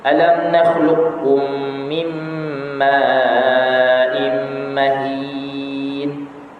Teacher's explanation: Idgham qaf kepada kaf.